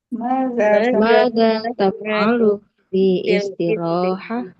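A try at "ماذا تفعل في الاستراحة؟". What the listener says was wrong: Alif lamnya enggak dibuang. Fil istirahah.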